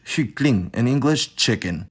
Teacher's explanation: Finally in the plosives, we have palatalization of /k/ in North Sea Germanic (which basically means English and Frisian for our purposes). Namely, around front high vowels, [k] became [ʧ]